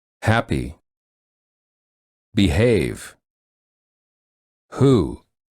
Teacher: the vocal cords are tense and restricted and the back of the tongue is pushed against the throat to create friction as the air flows out from the back of the mouth